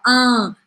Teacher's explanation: Aqui não pronuncia esse N, tá? Esse N faz simplesmente o som ser anasalado. Fala un, tem que deixar a boca aberta.